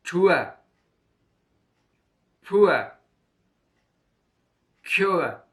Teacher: Ua is a diphthong made by the combination of U and A. The mouth is made open. The tongue position is in front side of the mouth.